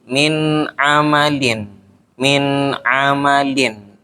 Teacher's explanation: tidak dibaca dengung namanya masuk ke izhar